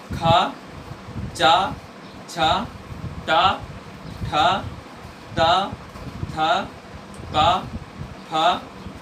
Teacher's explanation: इन वर्णों को हमारे प्रयत्न के माध्यम से विवार, श्वास और अघोष इन 3 प्रयत्नों के अंतर्गत इन वर्णों को रखा गया